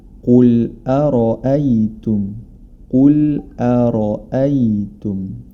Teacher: huruf ro dibaca tebal karena dia berharakat fathah · Huruf ra dibaca tebal karena dia berharokat fathah. Hati-hati jangan sampai hamzah di sebelum huruf ra atau setelahnya ikut menjadi tebal, karena huruf ra saja yang tebal.